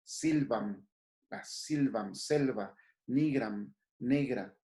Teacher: Terra se diga tierra. La I tónica entonces pasará a E.